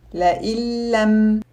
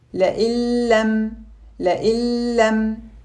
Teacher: Here, we have a Noon Sakina followed by a letter of Idgham. We combine the Noon Sakina with the Idgham letter to create a single letter with a shadda similar to the second letter. لئن لم. Notice that there is no gunna in this Idgham because the letter lam is one of the letters of Idgham without gunna.